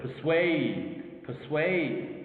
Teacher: the dominant or the stressed word, okay, is in the 2nd syllable, swayed